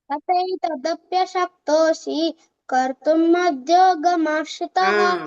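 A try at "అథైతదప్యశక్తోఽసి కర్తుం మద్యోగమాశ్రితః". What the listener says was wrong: మధ్యోగ, అక్కడ మహాప్రాణం రావద్దు, మధ్యోగ అన్నావు, అదొక్కటే కరెక్షన్.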